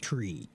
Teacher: it's almost like you start doing the R before the T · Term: TR sound